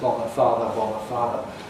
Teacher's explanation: We all retain the distinction between /ɒ/ of /ˈbɒðə/ <bother>, whatever that might be, and the /ɑː/ of /ˈfɑːðə/ <father>